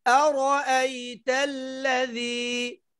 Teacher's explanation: রটা মোটা হবে, এই হামজা স্পষ্ট।